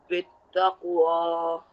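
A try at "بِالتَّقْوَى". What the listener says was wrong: Bittaqwa. Okay, nice.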